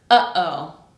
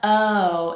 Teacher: Notice how you have that stop in the middle. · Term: glottal stop